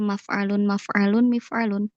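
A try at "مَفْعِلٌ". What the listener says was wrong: Maf'ilun. Nah, perhatikan ya, jangan sampai terkecoh dengannya adalah harokat ain fiil di fiil mudhari'nya, yaf'ilu. Makanya maf'ilun, maf'ilun.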